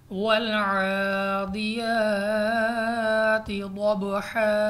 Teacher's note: आइन पे खड़ी ज़बर है, हमने इसको खींच कर यानी दो अलिफ तक लंबा करना है